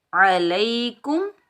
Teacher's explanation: عین کو حلق کے درمیان سے ادا کریں گے